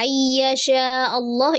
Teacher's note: ada alif lam jalala di kata Allah, karena sebelumnya adalah fathah jadi dibaca dengan tebal